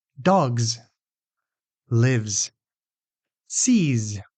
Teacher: Some examples are cats, laughs, stops. The second way that final S can be pronounced is a voiced Z, and it appears after voiced sounds like b, d, g, v, m, n, and all vowels.